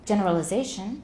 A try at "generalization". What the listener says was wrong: There's a timing issue there. Instead of generalization, which is too slow